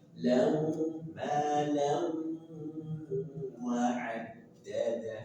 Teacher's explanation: Lam tahan 2 sampai 3 harokat. Idgham bi gunnah.